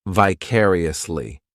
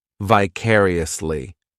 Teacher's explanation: The third syllable, it's like that letter I, just has that e sound. And the fourth syllable has the schwah.